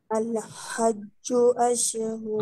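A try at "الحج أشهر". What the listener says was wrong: আল হাজ্জু না, হাটা একটু সুন্দর করতে হবে, আল হাজ্জু,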